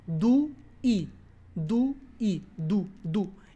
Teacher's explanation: It's a dental D sound, okay? So just behind your teeth, the.